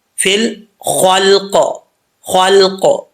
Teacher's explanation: لام جو ہے اس میں قلقلہ نہیں کرنا، اور خا کو پر پڑھنے کے چکر میں لام کو بھی پر نہیں پڑھنا، لام باریک ہوتا ہے